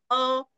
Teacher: अ म्हणताना आपलं तोंड अगदी छोटूस उघडतं ना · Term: ऱ्हस्व